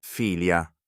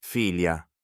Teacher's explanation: In the first declension, the nominative singular ends in a short vowel. filia, The ablative singular ends in a long vowel. filia, Vowel length is the only distinction.